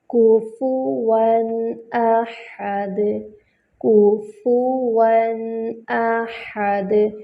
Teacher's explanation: کفواً احد، کفواً احد، کاف پر ہونٹوں کو مکمل گول کریں گے، دوما ہے، فا پہ بھی دوما ہے، ہونٹوں کو مکمل گول کریں گے۔ فا بھی جو ہے وہ الشفتان یعنی ہونٹوں سے ادا ہوتا ہے